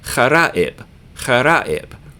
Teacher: Just put the uh-oh sound in the middle of the word.